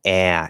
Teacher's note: he's also making it like a diphthong he's not making it a solid ah he's like ah he's letting it move uh which i think